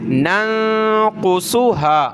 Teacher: نون کو نون کے ساتھ ملایا، یہاں ناک میں آواز پیدا کی